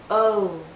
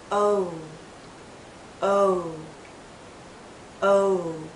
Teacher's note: more open o think of the letter o o o but as we come to the end of this vow sound our lips become even tighter it finishes actually with a slight ooh sound